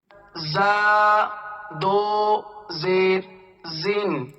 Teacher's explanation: سختی سے پڑھا جائے گا، یہ حروف صفیریہ میں سے ہے